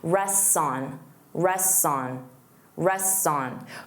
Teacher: you're going to drop that T entirely